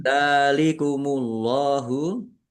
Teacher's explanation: Allahnya dibaca tebal karena harokat di depannya domah